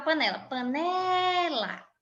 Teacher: veja que o né é a sílaba mais forte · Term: sílaba tônica